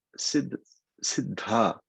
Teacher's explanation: It is a dha. It's aspirated. It's like like you're giving a laugh there or something.